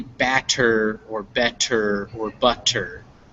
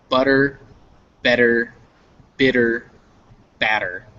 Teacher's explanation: So when you say it, it's not going to be batter or better or butter. It's going to sound more like a D, but very short. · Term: tap